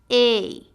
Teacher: position your jaw Rises with your tongue and closes slightly a your tongue Glides from the mid level to the near roof of your mouth let's try it a the a sound can happen at the · the lips are in the neutral position your jaw Rises with your tongue and closes slightly a your tongue Glides from the mid level to the near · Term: long a sound